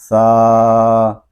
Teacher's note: یہ زبان کا سرا اور اوپر کے دانتوں کی اندرونی کنارے سے ادا ہوتا ہے، اس کو ہم سا یا سا یا سو نہیں پڑھیں گے، بلکہ نرمی کے ساتھ پڑھیں گے اور اس کی آواز کو ہوا میں ختم کریں گے۔